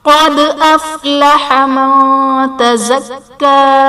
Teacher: قد افلح من تزکا، قد میں قاف حرف مصطلیہ ہے پر پڑھا جائے گا، دال حرف قلقلہ ساکن ہے تو یہاں پر قلقلہ خوب ظاہر کریں گے۔ من تزکا میں نون ساکن کے بعد حروف اخفا میں سے تا ہے تو یہاں پر اخفا کا قاعدہ ہوگا، یعنی نون ساکن میں ہم غنہ کر کے پڑھیں گے